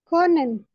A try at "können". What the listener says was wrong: Konan, richtig.